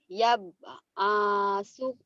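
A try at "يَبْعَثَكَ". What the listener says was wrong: Yab'asaka bukan asuka. Yab'asaka. Yab'asaka.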